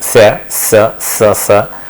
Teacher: where the sa, sa is like where you have a narrow opening at the teeth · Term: fricatives